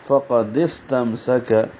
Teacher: دونوں سین میں سیٹی جیسی آواز پڑھیں گے، پہلے پہ ہمس ہوگا ، فقدس، تم میم ساکن پہ اظہار ہے، کاف باریک ہے،